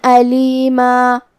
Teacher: کلمت علیمہ پہ رکیں گے تو اس پہ مد الف سے رکیں گے